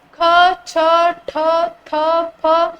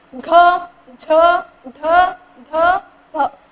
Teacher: ಉಸಿರನ್ನ ಕೊಟ್ಟು ಉಚ್ಚಾರವನ್ನ ಮಾಡ್ತೀವಿ ಇದಕ್ಕೆ ಏನಂತ ಕರೀತೀವಿರಿ ಮಹಾಪ್ರಾಣಗಳು ಅಂತ ಹೇಳ್ತೀವಿ